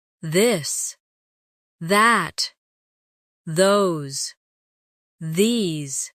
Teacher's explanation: Now practice the softer version of th where you let your tongue touch your teeth lightly but use your voice